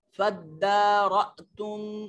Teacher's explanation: हमजा को झटके से अदा करते हैं